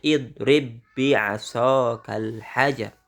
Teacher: Jangan balla seolah-olah ditahan, itu tidak boleh. Idgham pada kalimat idrib bi'asaka tidak perlu menampakkan qalqalah.